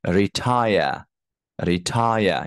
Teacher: you see the second syllable is higher than the first syllable